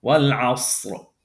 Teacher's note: We're going to pronounce this ra heavy. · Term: tafkhim